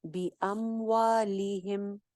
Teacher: एक अलिफ लंबा गोल होंठों के साथ। बी अमवालिहिम, लिहिम सिंगल हरकत है, ली लंबा नहीं करना।